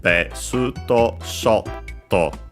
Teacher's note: in this case low, high, and then stays high up to included sho, and then low